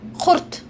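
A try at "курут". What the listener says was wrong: We call it kurut, not kurt. Kurut, yes.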